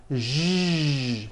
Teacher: To produce this sound, first make a sh sound, and then you add voicing. Sh, zh, like that. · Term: voiced SH sound